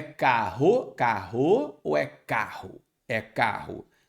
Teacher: então a sílaba tônica é a penúltima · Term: paroxítona